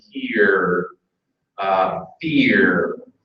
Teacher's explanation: Learners will often hear that there is an extra vowel in there · as a trip Thon where there are three vowels in there American English just treats it as it's a long vowel with an R sound